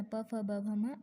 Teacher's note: उ वर्ण, प वर्गातील वर्ण प, फ, ब, भ, म आणि उपद्मानीय यांचे उच्चारणस्थान ओष्ठ आहे.